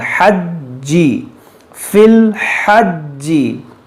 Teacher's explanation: یہ جیم حروف قلقلہ ہے اور مشدد ہے، اس کو پڑھیں گے 2 بار